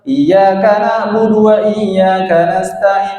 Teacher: di ayat yang kelima ini ada ain berharakat sukun. Itu harus ditahan terlebih dahulu. Iyyaka itu jangan cepet-cepet.